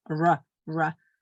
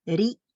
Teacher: kui tal järgnes käsra või siis jää, siis me hääldame teda nagu eesti keele R-i